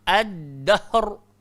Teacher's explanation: Hujung lidah langgar belakang, gigi arnab. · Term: Dal